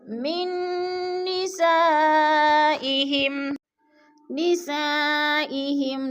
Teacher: جیسے من نسائهم، نساء پہ مد متصل ہے، حروف مدہ کے بعد حمزہ اسی کلمے میں ہے تو مد متصل 4 الفی مد ہے، اس کو ہم نے 4 حرکات کے برابر لمبا کر کے پڑھنا ہے۔